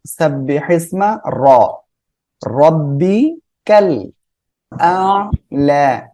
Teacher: র মোটা করে পড়বো